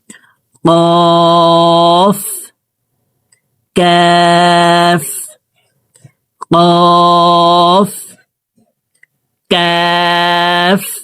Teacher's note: কাফ হরফকে জিহ্বার গোড়া থেকে একটু আগে বাড়াইয়া তার বরাবর উপরের তালুর সঙ্গে লাগাইয়া উচ্চারণ করে পড়তে হবে